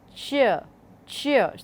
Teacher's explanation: there is a brief stopping of the airstream, then there is an obstructed release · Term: affricates